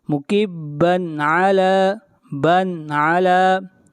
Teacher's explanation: یہاں پر تنوین کو ظاہر کر کے پڑھیں گے، اس لیے کہ تنوین کے بعد اگلا حرف عین ہے، اور عین حروف حلقی میں سے ہے۔ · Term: اظہار